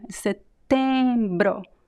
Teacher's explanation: In Portuguese, the E sound, it's one sound. It's just a nasal E sound.